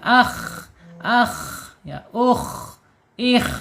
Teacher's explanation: Kemudian secara makhraj ee sifat sifat pertama ada di alhams. Alhams ya mengalirnya ee udara atau napas ketika dia sukun.